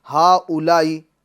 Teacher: تو واؤ پڑھنے میں نہیں آتا، حمزہ پڑھنے میں آتا ہے